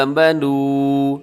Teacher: آگے دیکھیے گا آمنوا، آخر میں واو مد ہے، تھوڑا سا کھینچ کے لمبا کر کے پڑھیے گا